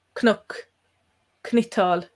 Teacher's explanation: That's why you can hear the slight knuck, knital. There's a little vowel almost between the C and the N